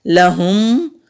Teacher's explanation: ہا کو حلق سے نکالیں گے، لام کو لمبا نہیں کریں گے۔ اگر لام کو ہم لمبا کریں گے تو میننگ بالکل الٹ ہو جائیں گے، تو جلدی سے لام کی ادائیگی کرنی ہے۔